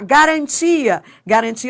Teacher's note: o I e o A formam iato